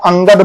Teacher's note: अनुस्वार का उच्चारण जो है वो नासिका से किया जाता है नासिका से मतलब जैसे आप अंगद बोलकर देखिए तो नासिका से